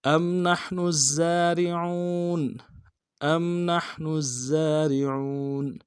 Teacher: حمزہ کو میم ساکن کے ساتھ ملانا ہے، میم ساکن میں غنہ کریں گے